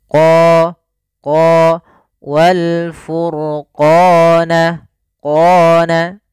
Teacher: Dan kemudian pada lafal qa, ini ada bacaan mad tabi'i. Qa, untuk huruf qaf sendiri, makhrajnya daripada pangkal lidah kita dengan langit-langit atas.